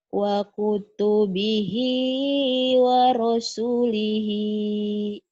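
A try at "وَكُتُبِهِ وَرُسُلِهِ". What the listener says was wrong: wa kutubihi waru ya, bukan warasul. Wa kutubihi wa rusulihi.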